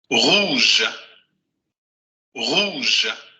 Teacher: Es una vocal debilitada que sería el fonema schwa, nada más que el fonema schwa del francés, pero debilitada. Por eso no dicen rouge, dicen rouge, rouge, rouge, rouge.